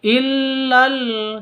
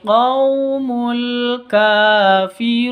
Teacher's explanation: awalnya illa ini panjang 2 ketuk, berhubung bertemu dengan alif lam, maka illanya menjadi pendek, langsung masuk ke alif lamnya.